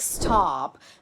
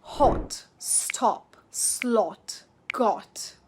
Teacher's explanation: RP keeps it round and short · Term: short O